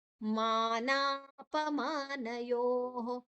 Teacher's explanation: ಮಾನಾಪಮಾನಯೋಃ ಮಾನಾಪ ನಾ ದೀರ್ಘ ಪ ಹ್ರಸ್ವ ಮಾ ದೀರ್ಘ. ನ ಯೋಃ ಯೋ ಆದ ನಂತರ ವಿಸರ್ಗದ ಉಚ್ಚಾರಣೆ ಹ.